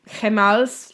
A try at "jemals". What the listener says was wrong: You pronounced the letter the way they pronounce them in Spanish. G, we say G.